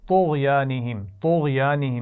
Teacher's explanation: طغیانہم میں طا کو بھی موٹا پڑھیں گے، غین کو بھی موٹا پڑھیں گے